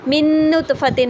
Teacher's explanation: من نطفتن میں بھی کاملہ ہے کیونکہ نون ساکن کے بعد نون آیا تو نون کی کوئی آواز باقی نہ رہی